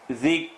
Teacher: Ra is heavy, ha is light.